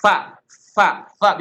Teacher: suara samar pada pendengaran yang disebabkan terbukanya dua pita suara dan tidak ada getaran pada keduanya ya serta banyak udara yang mengalir ketika mengucapkan hurufnya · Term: hams